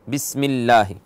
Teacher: اور اگر اس سے پہلے کسرہ ہو، لفظ اللہ سے پہلے کسرہ ہو، تو اس میں ترقیق کریں گے، لفظ اللہ کو مرقق پڑھیں گے، یعنی باریک باریک پڑھیں گے